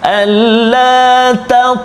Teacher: Huruf ta di tengah kalimah, qalqalah sughra kan. Jadi kena ada lantunan ringan dia.